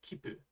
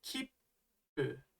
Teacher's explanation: you're really just extending that P sound and holding on to it for a little extra beat. It's almost like you pause in the middle of the word. · small tsu makes you hold the next consonant just a little longer than normal